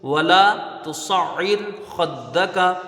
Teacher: یہاں را ساکن سے پہلے زیر ہے، را کو باریک پڑھا جائے گا. اور حروف مستعلیہ دوسرے کلمے میں ہے اس لیے را باریک ہوگی، اس کو پر نہیں پڑھیں گے.